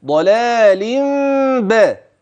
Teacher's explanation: إذن سألفظ هكذا: ضلال لم ب. إذن جاء في اللفظ ميم واقعة بين اللام وبين الباء، هكذا: ضلال ب.